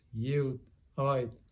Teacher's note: produces an unaspirated, unreleased t in the number for seven, and also in the number for eight. This sometimes happens in final position or before another consonant.